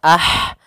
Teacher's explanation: Ma ada Mad thii innama nah ah di sini ada huruf ha sukun yaitu ha yang memiliki sifat hamz maka alirkan dulu nafasnya